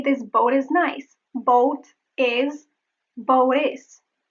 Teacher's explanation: the flap T also occurs when you link words together in sentences